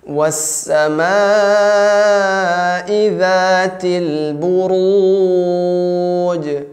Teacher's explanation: pantulannya jangan tebal ya. Buruj tipis ya. Bunya tipis juga, ru-nya tebal.